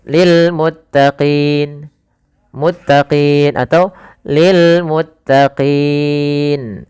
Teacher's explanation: kita boleh memanjangkan 2 harakat, boleh 4 harakat, boleh pula 6 harakat. Maka boleh lil muttaqin, muttaqin atau lil muttaqin. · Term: mad arid lisukun